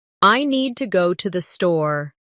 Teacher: The stress is on need and store. While to and the are softer and faster. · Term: rhythm